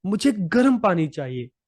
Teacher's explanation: इस वाक्य में गर्म पर ज्यादा बल दिया गया है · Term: शब्द बलाघात